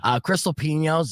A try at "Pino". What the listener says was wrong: Stop saying it with the N-yay. Pino, like the wine without the T. Pino. Pino. Might as well just say Pignon.